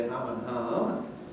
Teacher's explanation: So if we take a pair of words like ham and harm, that's meat, ham, damage, harm, they are different in all kinds of native English. But in the north they're going to be ham and harm, much the same quality, difference in length. In the south, ham and harm.